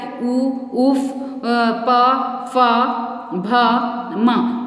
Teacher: जब इन वर्णों का उच्चारण करते हैं तो इसका प्रयोग हम ओठ का ज़्यादा करते हैं, इसलिए ये ओष्ठ कहलाए। उ, उफ, प, फ, भ, म, मतलब हम ओठ का प्रयोग करते हैं।